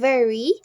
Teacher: The manner of articulation is fricative. The lower lip touches the upper teeth, allowing air to pass with friction while the vocal cords vibrate.